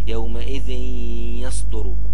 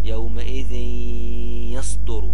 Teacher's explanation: ما ننطقش التنوين وما ننطقش النون وننطق اللي هي حرف من حروف يرملون